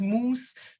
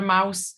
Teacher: then the ow sound um it turns into an ooh sound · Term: oo sound